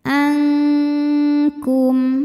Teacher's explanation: samar-samar siap-siap menuju Kaf disertai dengung bunyi dengungnya besar karena makhraj huruf Kaf jauh dari makhraj huruf